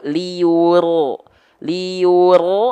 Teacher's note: Lin lembut Li jangan sampai gitu ya lembut gitu oke nah pastikan monyong bibirnya karena wau punya punya makhraj harus maju mulutnya jadi pastikan dia rnya jangan monyong rnya tuntaskan dulu buka mulutan